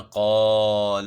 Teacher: الف سے پہلے زبر ہے، الف مدہ ہے، اس کو تھوڑا کھینچیں گے